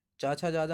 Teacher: चा छा जा झा होते हैं तालव्य